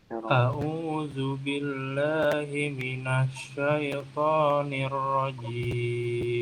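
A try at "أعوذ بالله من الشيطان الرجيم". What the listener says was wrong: Tinggal kurang dikit sh-nya. Menyebarnya mungkin udah dapat, cuman agak kurang lama. Himiminasyaiton. A'udzu billahi gitu. Himinasyaitoni.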